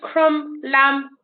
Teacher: you don't actually hear the bee in it